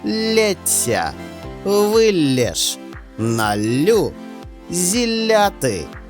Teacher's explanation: подовжується М'який приголосний Л В особових формах теперішнього часу дієслів лити литися